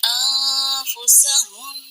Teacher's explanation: یہاں بھی آواز چھپائیں گے، ان نہیں کریں گے